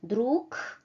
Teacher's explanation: we write a voice consonant at the end of a word, but it becomes voiceless when we pronounce it